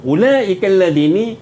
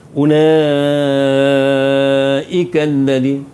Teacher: ulaikal ladini mad wajib muttasil. Mad wajib muttasil. Panjangnya 5 harakat. Ulaikal ladini, tak ada pilihan, memang kena 5 harakat.